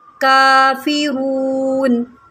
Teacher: काफ के ऊपर खड़ा ज़बर है, इसको 1 सेकंड खींच के पढ़ें।